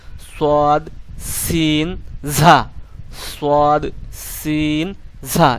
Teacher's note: নিচের দুই দাঁতের পেট দাঁতের পেট ও আগার সঙ্গে লাগাতে হবে অর্থাৎ নিচের আপনার জিহ্বার আগা নিচের দাঁতের দিকে লাগিয়ে উচ্চারণ করবেন